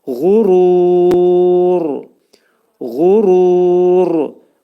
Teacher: Burada ğa hərfi boğazın yuxarısından çıxarılır. Ru dedikdə bu mədd ariz olacaq.